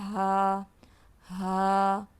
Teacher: ہا حرف حلقی میں سے ہے، حلق کے نیچے والے حصے سے. جو سینے والے کی طرف ہمارا حصہ ہے گلے کا، نیچے والے حصے سے ہا، ہا.